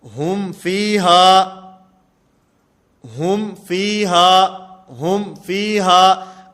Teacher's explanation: اب یہاں پر اظہار ہے. اظہار کا معنی کہ میم کی جو آواز ہے اس کو بالکل ظاہر کر کے پڑھا جائے گا